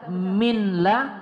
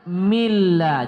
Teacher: idgham bila ghunah nun sukun bertemu dengan lam